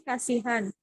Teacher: terdapat pada kata Kasihan yang mengalami penghilangan bunyi konsonan H